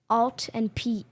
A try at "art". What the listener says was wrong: No. Art. Stop clenching your jaw. Art.